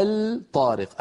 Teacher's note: هذه أصلها الطارق، أدغمنا لام التعريف في الطاء فصار النطق بطاء مشددة. أيضا لا بد من أن يكون النطق بطاء مشددة غير مفكوكة الطارق.